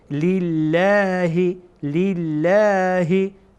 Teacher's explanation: لام جلاله رو ما باریک میخوانیم، نمیگیم لله لله، بلکه میگیم لله لله.